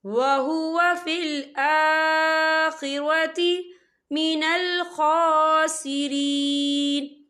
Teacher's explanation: یہ دیکھیں فی حمزہ کے پر کھڑی حرکات ہے، تو ہم اسے 2 یا 3 حرکت کے برابر کھینچ کے پڑھیں گے